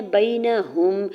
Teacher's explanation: یا ساکن سے پہلے با کے اوپر زبر یا لین ہو رہا ہے، نرمی سے موڑتے ہوئے ادا کریں گے۔ نون کے زبر کو بغیر کھینچے ہوئے ادا کرنا ہے اور ہا کی پیش کو میم ساکن کے ساتھ ملاتے ہوئے پڑھیں گے۔